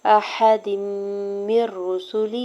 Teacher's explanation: इदगाम बगैर गुन्ना के रूल अप्लाई हो रहा है, यानी मिला के पढ़ेंगे लेकिन गुन्ना नहीं करेंगे